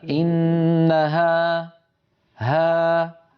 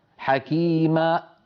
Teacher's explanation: فهذه الألف آخر صوتها فم مفتوح، ويتلاشى صوتها شيئا فشيئا، لا يوجد شيء يقطع عليها الصوت، لا من لسان ولا من شفتين، بل ولا من وترين صوتيين.